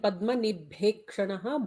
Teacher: padmanibhekshanaha, bha is a mahaprana